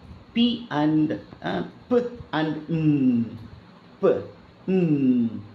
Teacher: ரெண்டு ரெண்டு லிப்ஸ் க்ளோஸா வந்து அப்படியே பர்ஸ் மாதிரி அப்படியே டைட் ஆகி காத்த அப்படியே அடைச்சு வந்து மோதி நிக்கும் அப்புறம் டக்குன்னு ஓபன் ஆன உடனே வெளியில வரும் அப்ப என்னென்ன சவுண்ட் பாருங்க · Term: பை லேபியல்